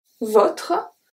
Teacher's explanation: So here the O is a close O.